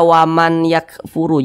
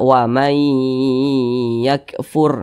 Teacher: huruf nun ini dimasukkan ke huruf ya · bhunah jadi nun sukun berjumpa dengan huruf ya hukumnya idgham bhunah cara bacanya itu dimasukkan kemudian juga didengungkan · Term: idgham bi gunnah